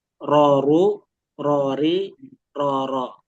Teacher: Ingat getaran jangan terlalu banyak, jangan ro, ri gitu.